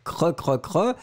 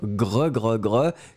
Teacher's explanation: la différence entre le cre, CR, cre, cre, cre, et le gre. GR, gre, gre, gre, qui est plus guttural